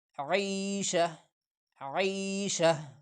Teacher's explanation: وقفاً عیشہ عیشہ۔ یہ گول تا جو آخر میں لکھا ہے، یہ حالت وقف میں یہ کنورٹ ہو جاتا ہے ہا کی طرف، تو ہم پڑھیں گے وقف کی صورت میں عیشہ عیشہ۔